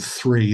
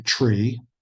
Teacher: the th sound so instead of the word three they say tree